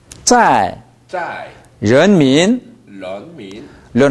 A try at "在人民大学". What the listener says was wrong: 할 때 혀끝이 붙었죠. 앞으로 붙이지 않도록 주의하세요. 人民人民 네, 좋습니다. 大学大学人民大学人民大学 됐어요.